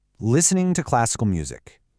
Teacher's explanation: The T is just gone.